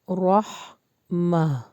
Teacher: را کا مخرج ہیوی ہوگا اور ہا حلق سے نکلے گا